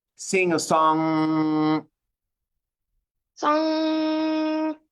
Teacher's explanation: Say sing a song, and on the end of song, sustain on the NG.